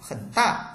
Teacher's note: thì cái từ mà có thanh ba đó mình đọc không hết cái thanh ba, đọc ngắn thôi. Bình thường ví dụ ta đọc là khẩn thì bây giờ mình chỉ đọc khẩn, giữa chừng là ta dừng.